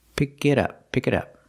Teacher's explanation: we hear that t and it sound like a fast d